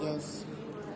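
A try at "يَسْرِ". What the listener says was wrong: Bukan yes. Ini yang tebal. So, itu huruf sini nipis.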